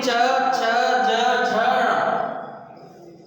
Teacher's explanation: क्योंकि जब हम चावड़ का उच्चारण करते हैं तो हमारी जो वायु है, जो जिह्वा है, वो तालु से छूती है, इसलिए इनका तालव्य है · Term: तालव्य व्यंजन